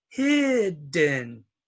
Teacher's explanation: it's one vowel and it's stressed and so it is not long it is short